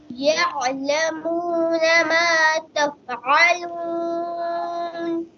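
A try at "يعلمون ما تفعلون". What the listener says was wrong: आइन की आवाज देते हैं कलकला नहीं करते यअलमून मा तफ़अलून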